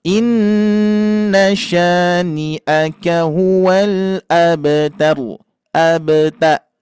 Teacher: pantulannya ada, cuman karena posisinya di tengah, maka terdengar ringan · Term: qalqalah sugro